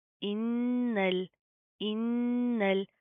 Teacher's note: नून के ऊपर शदा आ रही है, गुना करेंगे, नाक के अंदर साउंड पैदा करेंगे